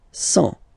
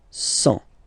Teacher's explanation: Remember, final T not pronounced.